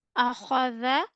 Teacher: in akhadha, kha will be read with full mouth while dha will pronounce with soft tone